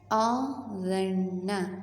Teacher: آگے نون کو ہم نے تھوڑا سا چھپا کے پڑھنا ہے کیونکہ آگے حرف اخفا ہے. ذرنا.